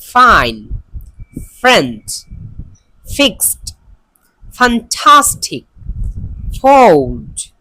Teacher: touch the lower lip with upper teeth, এটা হলো এই ফা উচ্চারণের নিয়ম